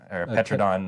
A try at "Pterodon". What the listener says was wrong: the P is silent.